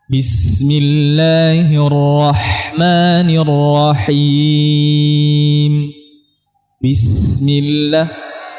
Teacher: Kemudian rakhawah bis ini hames. Banyak udara yang mengalir.